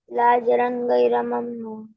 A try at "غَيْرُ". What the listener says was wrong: غین سے ہی پڑھنا ہے، غیرہ غیرہ نہیں پڑھنا ہے، گاف نہیں ہے قرآن میں، غیرہ.